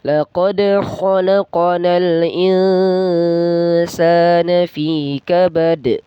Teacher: fi-nya itu juga panjang ya, 2 harakat, dan kabad, kabadnya itu qalqala kubra.